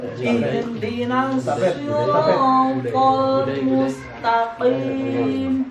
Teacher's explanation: Makhraj qaf adalah aqsal lisani, tenggok lisan paling dalam. Jadi bacanya itu harus ada cekloknya.